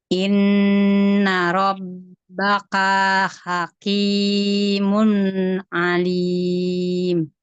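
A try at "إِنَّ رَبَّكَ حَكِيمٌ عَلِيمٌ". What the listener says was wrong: Tapi Rabbaka kafnya tidak panjang.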